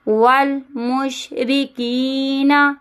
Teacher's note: اب یہاں پہ یا مدہ ہے اسی لیے اس کو ہلکا سا کھینچیں گے